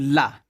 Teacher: मुख द्वार मध्य में बंद हो जाता है और हवा दोनों ओर से निकल जाती है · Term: प्राश्विक